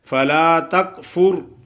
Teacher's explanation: را ساکن اس سے پہلے زبر ہو یا پیش ہو تو اس کو پر پڑا جاتا ہے